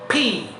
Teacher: আমরা দুই ঠোঁট যুক্ত করে সজোরে বাতাসটা ছেড়ে দেব